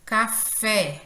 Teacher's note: a sílaba fé, ela soa com maior intensidade, é a última sílaba. A palavra boneca, boneca, esse né, ele é pronunciado com maior intensidade. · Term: oxítonas